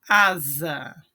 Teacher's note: Como o S está entre duas vogais, intervocálico, som do Z